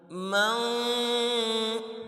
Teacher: یعنی کہ نون کی آواز کو ناک میں چھپانا ہے، ظاہر نہیں کرنا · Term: اخفا